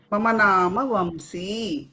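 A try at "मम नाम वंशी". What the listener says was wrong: ఉత్తమం.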